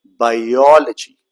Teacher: The second syllable is stressed. Stressed means what? It is to be spoken longer and louder.